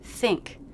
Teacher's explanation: i'll think about it then i have the stressed word think it begins with an unvoiced th a tough sound but you do have to make it so